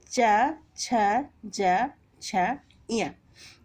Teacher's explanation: ये 5 वर्ण हमारे ये तालु को स्पर्श करते हुए बाहर निकलते हैं, इसलिए च वर्ग की ध्वनियों को हम तालु कहते हैं। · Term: तालव्य